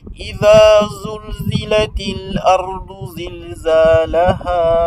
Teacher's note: pour cette lettre là, la lettre Z, le bout de la langue va se retrouver en bas, donc au niveau de la racine des incisives inférieures